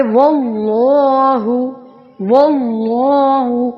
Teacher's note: اللہ کے لام سے پہلے زبر آ رہا ہے تو اللہ کا لام موٹا پڑا جائے گا